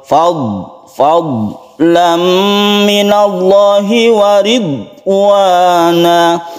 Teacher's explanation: Kemudian kita harus hati-hati di huruf dad. Huruf dad ini bukan qalqalah, jangan dipantulkan ketika sukun dad.